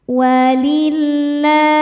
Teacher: Lam jalalah dibunyikan secara tarkik sebab harakat huruf sebelumnya kasrah. Cara bacanya lam dibaca tipis ya. Walillah. La hukumnya adalah mad thobi'i muqaddar. · Sebab huruf lam berharakat fathah panjang. Cara bacanya dipanjangkan lamnya dua harakat. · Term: tarqiq